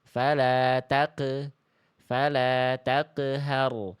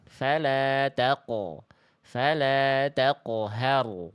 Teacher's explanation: Dilafalkan dengan pantulan yang kurang tebal sedangkan qof itu huruf tebal. · Jadi huruf qaf itu adalah termasuk ke dalam huruf yang tebal. Maka jangan sampai pantulannya itu tipis nih. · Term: qaf sukun